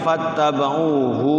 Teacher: Pas ain tuh. Ainnya 2 harokat. Jangan hu-nya yang dibaca panjang.